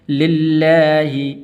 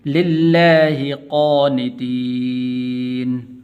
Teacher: لفظ اللہ کو پر نہیں کرنا بلکہ باریک کر کے پڑھنا ہے، کیونکہ اس کے پہلے لام کے نیچے زیر ہے